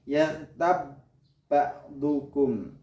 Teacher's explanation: di situ ada ba mati bertemu dengan huruf ba, maka cara membacanya ditebalkan, dimasukkan dengan cara menebalkan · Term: idgham mutamasilain